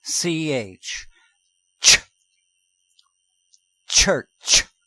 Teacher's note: if you allow the breath to continue after the puff of tea the sound is called CH